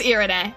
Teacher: Okay, Ire. R is flipped a little.